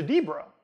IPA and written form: dibɹə (debra)